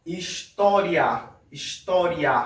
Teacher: Repara que o A sai um pouco mais forte, sai um pouco mais esticado. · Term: vogal